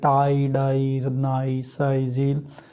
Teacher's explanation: This sound is made with the tongue, tip and blade and alveolar ridge. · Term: एल्वियोलर